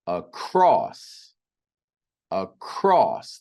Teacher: The second syllable is stressed or emphasized. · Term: stressed syllable